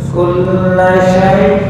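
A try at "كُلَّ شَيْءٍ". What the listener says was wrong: Nah, masih tercampur dengan shin. Bukan sho, so. Sa sa. Sekarang so so.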